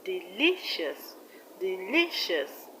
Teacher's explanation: In the word delicious, the stress is on li, which is the second syllable from the end of the word.